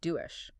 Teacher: A syllable final S or Z, it just transforms. It stops being that English sound and becomes more of a she sound like in the word shoe >> or that Z sound like in vision, >> right?